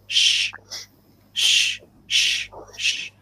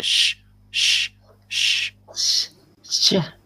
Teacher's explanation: I kind of purse my lips a little bit when I'm making that sound. Just a little bit to make a sh, sh, sh.